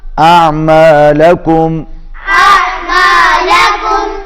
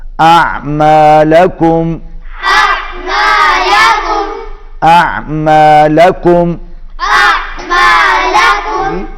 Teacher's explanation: عین حلق میں صدا ہوگا